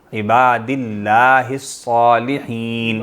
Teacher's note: صاد بھی موٹا ہوگا اور ہا حلق سے ہوگا